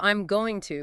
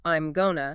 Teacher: The G sound in going just disappears, makes the phrase quicker and easier to say. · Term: Elision